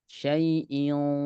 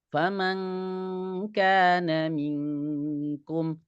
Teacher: Syai'in penuh di dalam. Tapi kalau kaf, faman kana minkum tipis. Ya, tidak penuh di dalam. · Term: ikhfa